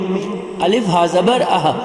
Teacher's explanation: دو چشمی ہا ہے سینے سے نکلنے والی، سینے سے ادا ہونے والی ہا